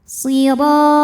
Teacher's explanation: Huruf ra dibunyikan secara tafkhim karena berbaris fathah, maka dibacanya tebal